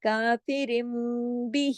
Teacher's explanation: یا مدہ کے برابر، دو حرکات ہی کھینچا جاتا ہے. جس طرح کھڑا زبر جو ہے ایک الف کے برابر پڑھا جاتا ہے سوری، اسی طرح کھڑی زیر جو ہے وہ یا مدہ کے برابر ہے. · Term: کھڑا زیر